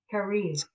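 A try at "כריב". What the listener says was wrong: Kariv. You have to hear the vet. The vet. Kariv.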